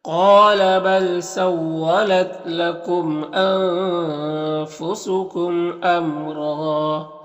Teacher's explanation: قال قاف حروف مستعلیہ میں سے اور یہاں پر الف مدہ ہے اور میم میں یہاں پر اظہار شفوی ہوگا، نون میں اخفا ہو رہا، میم میں اظہار شفوی ہو رہا، اس میم میں بھی اظہار شفوی ہو رہا. اور را میں وقف کریں گے تو ایک زبر کے ساتھ الف پڑھیں گے اور را کو پر پڑھیں گے